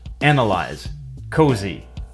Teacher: u.s organize apologize a similar change also occurs in other contexts where the s is voiced in other words it makes a z sound